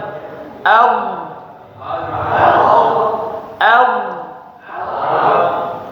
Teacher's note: Jangan diqqalqalah sekali lagi ya ketika sukun huruf d tidak dipantulkan.